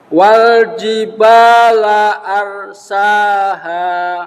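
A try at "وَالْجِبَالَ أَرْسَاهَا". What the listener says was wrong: Rohnya kurang tebal. Wal jibala arsaha.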